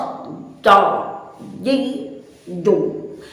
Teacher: Selanjutnya sahabat, huruf jim itu dilafazkan tidak dengan suara yang ditebalkan, tidak dengan suara yang dikecilkan atau yang dihimpit, sehingga suara jim terlafazkan dengan suara yang begitu tebal dan sedikit dengan pita suara yang dihimpit. Contoh do, ji, do.